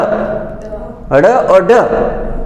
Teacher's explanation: उच्छिप्त ध्वनि में ड और ढ, हमारी जीभ इनको बाहर फेंकती है। उच्छिप्त यानी फेंकना।